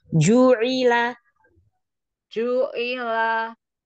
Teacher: Jimnya syiddahkan, jaharkan.